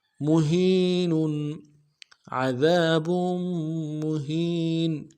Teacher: عذاب مہین، اگلے میم کو نون سے ادا کرنا ہے، ہا کو یا کے ساتھ ملانا ہے، یا مدہ ایک الف دال میں کھینچیں گے، نون کے اوپر تنوین ہے غنہ کریں گے، وقف سن میں نون کو ساکن کریں گے